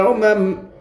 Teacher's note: میم کے اوپر زبر ہے، زبر کو جلدی پڑھے، تھوڑا بھی نہ کھینچے۔